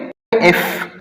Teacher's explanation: एफ produce करने से हमारा जो निचला होंठ है और ऊपर वाले दांत है ये आपस में टच होते हैं, तो इसको लेबियोडेंटल कहते हैं।